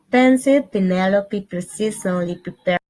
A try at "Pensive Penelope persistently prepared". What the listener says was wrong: A little bit more aspiration on the P. Just a little bit more. Sounding a little flat, so the risk sounds like she's pronouncing B's.